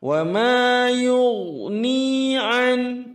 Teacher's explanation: Ini huruf ghain sukun isti'la, tebal dia, tabkhim, harus dibantu sedikit setengah munyong, dan sedikit semacam berjalan, jangan terlalu yukni atau yu'ni, itu berubah.